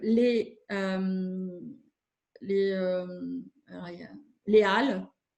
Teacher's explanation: c'est le fameux H qu'on ne prononce pas en français, mais on ne fait pas la liaison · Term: H aspiré